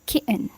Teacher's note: the second syllable was reduced and syllabic, so it will sound like kitten, where the n function almost like a vowel.